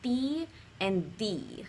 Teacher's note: it's close to Spanish and it's actually called a dental consonant